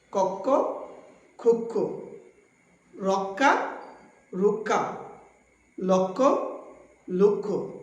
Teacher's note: শব্দের শুরুতে যদি অধ্বনি থাকে এবং এরপরে ক্ষীয় থাকে তবে অধ্বনির উচ্চারণ উকারান্ত হয়ে যায় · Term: সংবৃত